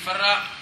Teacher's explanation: اول کو ساکن کر کے دوسرے میں ادغام کرتے ہیں تو فرا ہو گیا